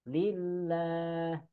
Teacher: lafaz Allahnya dibaca tipis atau istilah tajwidnya tarqiq. Lillah, jangan sampai lillah ya.